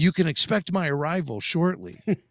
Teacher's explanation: Awesome trilled R's on arrival.